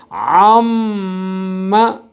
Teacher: ہونٹوں کے وہ خشک مقام جو ہر وقت باہر کی سائڈ پہ رہتے ہیں، خشک رہتے ہیں، جب وہ ملیں گے تب میم پڑھی جائے گی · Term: میم مشدد